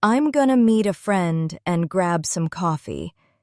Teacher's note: You see how going to became gonna? That's the sound of natural con-il.